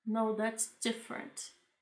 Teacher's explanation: Então ela fala bem devagarzinho, bem com uma entonação bem menor e põe a entonação maior no different.